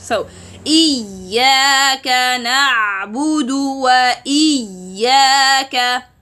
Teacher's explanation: Mad from Jawf, and Hamza from deepest part of the throat.